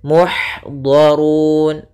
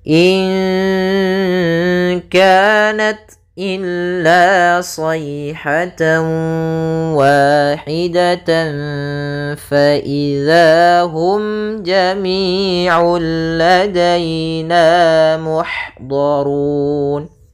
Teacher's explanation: Ini kita bisa membaca dengan 2 harakat, 4 harakat ataupun 6 harakat. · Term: mad arid disukun